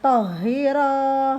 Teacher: haknya bertasydid ditekan dan ro 2 harokat